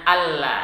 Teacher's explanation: Jangan dibaca anla karena di situ berlaku hukum idgham bila gunnah, nun sukun bertemu dengan lam. Jadi bacanya alla, seolah-olah nunnya hilang.